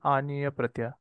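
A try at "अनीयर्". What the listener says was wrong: Aniyar. Aniyar. Okay, including the itaksara, it is aniyar.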